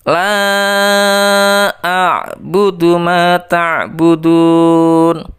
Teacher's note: Ya, la-nya itu dibaca 5 ketukan. Itu juga dibaca panjang. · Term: mad jaiz munfasil